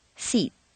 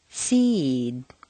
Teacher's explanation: the preceding vowel is said quite quickly and on a single stair step · or a voiced consonant when that you say B DG zvj the preceding vowel is said more slowly and on a double stair step